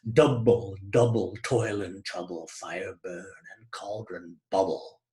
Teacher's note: they are speaking not in an iambic meter, but in a trochaic meter, as in double, double toil and trouble, fire burn and cauldron bubble.